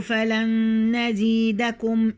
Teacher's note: هنا النون مع النون إدغام مثلين